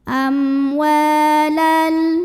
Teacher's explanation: Amwa wa matobi'i karena ada alif yang didahului baris fathah. Cara bacanya dipanjangkan wawunya 2 harokat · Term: mad tabi'i